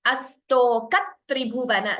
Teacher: So, astoka, sa is doubling. That is called dvitvam, doubling sound.